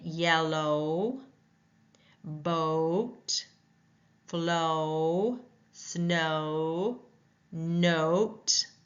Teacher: we see o w in snow so it's that o sound the tongue is midback the mouth is slightly tense and the lips are round it's heard in yellow boat flow snow note so it's raised